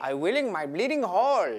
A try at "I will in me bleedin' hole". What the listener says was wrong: I'm saying me, I want a me. So it's bleed, not bleeding.